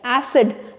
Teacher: जब हम इसको प्रोनाउंस करेंगे तो we will put stress, जोर देंगे A पर, acid. But when we'll pronounce this word ACIDIC, it will become acidic, ठीक है ना.